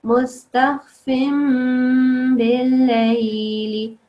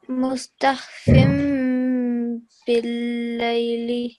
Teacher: there's actually a rule that when you see, when there's a meme anywhere, it doesn't matter if it's a small meme or any normal looking meme, and after that comes a ba, you say, you prolong the meme and it turns into a meme ghunna sound. So you prolong it for 2 seconds.